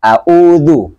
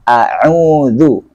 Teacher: Di ain harus jelas kedengaran, beda dengan hamzah, kemudian dhammanya juga didapatkan